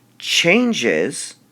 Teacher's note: obviously we stress the change part of changes · we stress the change part of changes. So we would designate this word by stressed, unstressed, because we're stressing the change part of the word, not the S part of the word.